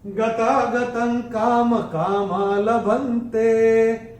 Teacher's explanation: और त के ऊपर चौथे चरण में अनुस्वार के बाद का अक्षर है क, और अनुस्वार के बाद जब क आएगा तो अनुस्वार का उच्चारण होगा अंग।